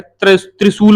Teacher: दंत मूर्धन्य। दांत से और दंत से और मूर्धा से टकराएगी वायु। तब जाके त्रिशूल बोल पाओगे